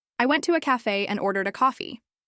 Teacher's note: Emphasizing went makes it clearer that you physically went somewhere.